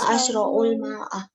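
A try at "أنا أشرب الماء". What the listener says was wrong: Asyrabu ya, ba. Ana asyrabul ma'a.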